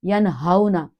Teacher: واو ساکنہ ہی ہے، لیکن اس سے پہلے حرکت کیا ہے؟ زبر ہے. تو اس لیے ہم نے یہاں ہمارے نالج میں اللہ نے دیا سبحان اللہ کہ یہاں اسے سٹریچ نہیں کرنا، یہ لین ہے